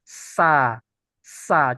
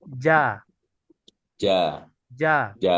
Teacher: enggak yang keluar Ustaz enggak enggak ada enggak ada nah Berarti kalau tidak ada udara dia masuk sifat jahr bukan sifat Hames